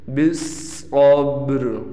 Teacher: ہم صاد کو موٹا بھی کریں گے اور قلقلہ بھی کریں گے